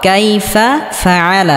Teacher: আইনটিকে হালকা গলার মধ্যে চাপ দিয়ে উচ্চারণ করতে হবে